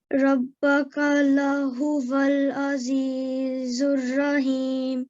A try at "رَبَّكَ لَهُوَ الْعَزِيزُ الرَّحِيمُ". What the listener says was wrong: Well done. That was really good recitation.